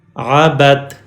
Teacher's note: دال کو سکپ کریں گے، نہیں پڑھیں گے دال کو چونکہ تا پہ شد سائن ہے. جب بھی کسی حرف پہ شد سائن ہو تو وہ حرف میں، شدہ والے حرف میں وہ والا پچھلا لیٹر کنیکٹ ہوتا ہے جس کے پاس زبر زیر پیش ہو، اور وہ لیٹر با ہے.